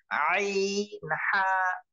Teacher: মাখরাজ হলকের মধ্যখান হইতে